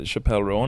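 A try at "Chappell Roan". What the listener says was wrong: you mean Chapel Roan? it's not Chappelle. oh my God, no, it's Chapel Roan.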